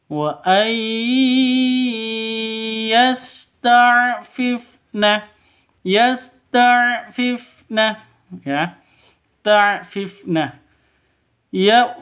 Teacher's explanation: Di sini ada nun mati bertemu dengan ya. Nun mati bertemu dengan ya, cara bacanya itu masuk ke ya disertai dengung. Wa seperti itu, disertai dengung karena idgham bigunnah.